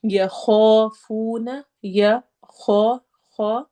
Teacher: خو حروف حلقی میں سے ہے، حلق سے ادا ہوگا، موٹے حروف میں سے بھی ہے، تو ہم نے اس کو موٹا بھی کرنا ہے، ساتھ الف بھی موٹا ہیوی پڑھا جائے گا اور 2 حرکہ لمبا ہوگا۔